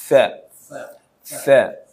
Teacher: sa itu lidahnya sedikit, ujungnya sedikit keluar nyentuh gigi atas